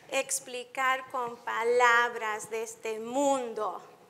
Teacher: in the first line, explicar con palabras, the emphasis is on the sixth and then the tenth syllable